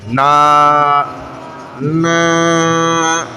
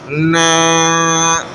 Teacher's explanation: مثلا جیسے دیکھیں نون کھڑا زبر نا, نا, تو اب آواز ناک میں نہ جانے دی جائے, ظاہر کر کے پڑھیں